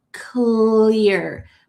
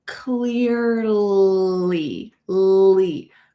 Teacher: My tongue is coming out of my mouth. We call this a light L. Light L. And you can remember this because when you say the word light, your tongue is also coming out of your mouth.